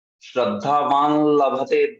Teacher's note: हाँ, तो देखिए आप ऐसे बढ़ते, श्रद्धा वा तक ठीक है, हाँ, कोई अनुनासिक वहां पे नहीं आ रहा है, श्रद्धा वा। लेकिन जैसे ही वो लभते बोलना है ना, तो आपको अनुनासिक बोलना पड़ता है। श्रद्धावान लभते, वां लभते, ऐसा होगा।